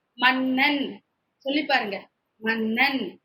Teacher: நாவின் நுனி மேல்வாய் அன்னத்தின் முன்பகுதியை தொடுவதால் நகரம் பிறக்கிறது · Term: ரன்னகரம்